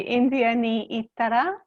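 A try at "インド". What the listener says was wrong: So India in Japanese is pronounced Indo.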